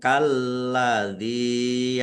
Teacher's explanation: lamnya ada tasdidnya, dibaca double. Ya, ditekan biar tampak doublenya. Zal kasroh ya sukun mat tobi'i, panjang 2 harokat.